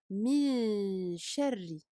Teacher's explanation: nous ne posons pas la langue sur le palais afin de ne pas prononcer le Noun clairement · En arabe, il s'agit du irfa. Donc, nous cachons, nous dissimulons le noun derrière le shin et nous faisons sortir le son par le nez. Donc, nous effectuons une runna. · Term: dissimulation